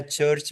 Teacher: पहले air block होती है देन रिलीज होती है फ्रिक्शन के साथ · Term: एफ्रिकेट